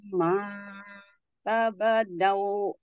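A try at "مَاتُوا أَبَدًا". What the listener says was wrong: Tadi A-nya terlewat ya, Bu. Ma, dari mata abadan. Mata abadan wala.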